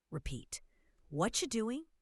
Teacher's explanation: What are you doing becomes what you doing? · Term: reductions